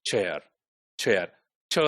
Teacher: so chair in chess the first sound is affricate which is voiceless